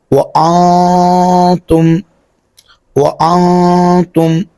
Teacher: یہاں پر بھی نون ساکن کے بعد حروف اخفا میں سے تا آ رہا ہے تو یہاں پر بھی ہم اخفا کر کے پڑھیں گے